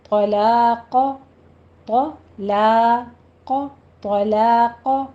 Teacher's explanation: سیٹی کی آواز لے کر آئیں، عزم الطلاق میں آپ نے طا کو تشدید ہے سختی سے بھی پڑھنا ہے اور اس کو پر بھی پڑھنا ہے